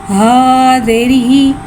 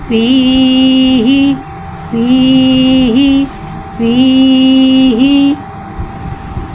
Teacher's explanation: हा को यहाँ भारी अदा करके पढ़ेंगे। हा के नीचे ज़ेर है, ज़ेर को नीचे गिराते हुए अदा करके पढ़ेंगे।